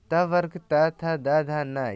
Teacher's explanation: त वर्ग त थ द ध न ये दांतों का स्पर्श करते हैं